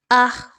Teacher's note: بہت زیادہ ہا ادا کرنے کے چکر میں آخر میں ایک خ کی ساؤنڈ آ جاتی ہے۔ اس کے علاوہ ہا کی طرح اس کی ادائیگی رکھتے ہیں، تو یاد رکھیے ہا کی جو ادائیگی ہے وہ انتہائی سافٹلی، نرمی کے ساتھ، پولائٹ انداز میں اور بہت ہی ایک سریلی سی آواز میں ہا کی ادائیگی کی جائے گی۔